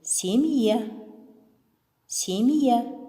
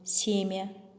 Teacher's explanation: мягкий знак разделяет согласный перед м и последующий мягкий гласный а гласный в таком случае произносим с начальным звуком й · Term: разделительная функция